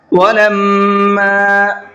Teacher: میم کے اوپر تشدید ہے تو میم میں غنہ کریں گے